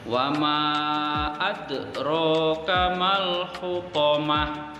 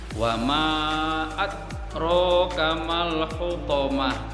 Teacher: dalnya berharokat sukun, maka membacanya harus dipantulkan secara tipis, secara ringan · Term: qalqalah sughra